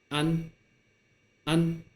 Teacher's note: At the end of this sound, you will have to raise your tongue to touch the upper gum.